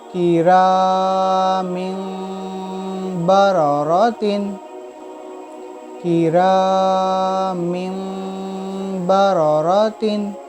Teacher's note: یعنی اس دو زیر کو تنوین کو ہم میم سے بدل کر پڑھیں گے۔ میم میم زیر میم، با زبر با، را زبر را، با را، را زبر را، تا دو زیر تین، با را را تین۔ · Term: اقلاب